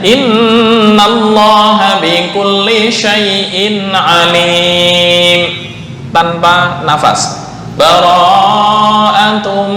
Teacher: Cara yang kedua, saktah atau diam sejenak tanpa nafas.